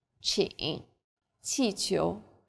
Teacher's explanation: Qi is like the CH in cheap, but again with a flatter tongue and a stronger puff of breath.